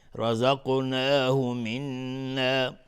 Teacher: نون مشدد 2 حرکت غنه میدیم